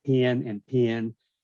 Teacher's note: Southern speakers don't say pin and pen, they go pin and pin.